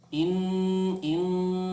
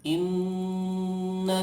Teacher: Saya kasih contoh in ya, hidungnya itu ditutup. In rasakan suaranya ada di hidung